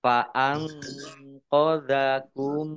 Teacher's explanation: Nun sukun bertemu dengan huruf qaf, bacaan ikhfa dibaca samar-samar.